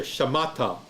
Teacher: Second syllable, ma, which has the emphasis, ma, and then ta, right there, shamata. So even though this looks like a 4-syllable word, it's really just a 3-syllable word because of the guttural and the silent shewa